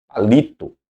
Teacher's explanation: as paroxitonas eu tenho a sílaba forte a segunda